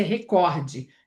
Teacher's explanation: Em português é record, a sílaba tônica é cor.